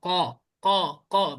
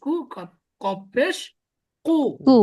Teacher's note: এটা হলকের ভিতর দিয়ে বলে, আপনার গলার ভিতর থেকে চাপ দিয়ে উচ্চারণ করতে হবে।